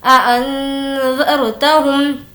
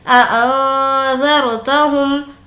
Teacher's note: हमें नून की आवाज़ को नाक में छुपाना है, वो इसलिए कि नून साकिन के बाद ज़ाल है और ज़ाल हुर्फ़ इख्फ़ा में से है।